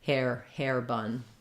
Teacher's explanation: for two word combinations like this where there's two nouns together we tend to stress on the first one